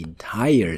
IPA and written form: ɪnˋtaɪr (entire)